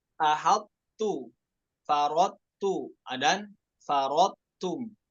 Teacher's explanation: Sifat idbak pada huruf toknya itu tetap kita baca. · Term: idgham naqis